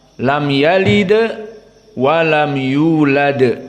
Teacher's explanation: yalid wa lam yulad semuanya murqoqoh tidak ada huruf atafkhim dan di sini Dal ada dua Sakinah maka di sini hukumnya Qalqalah